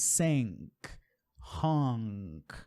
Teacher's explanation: É um outro som referente ao N, o som que a gente não prega a língua no céu da boca.